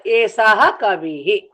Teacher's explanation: హ అంటే ఏమిటి విసర్గం అందుకని నేను హా అని పలుకుతున్నాను